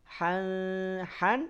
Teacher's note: Han diucapkan dari tengah tenggerokan samarkan bunyi tanwin disertai gunah dua harakat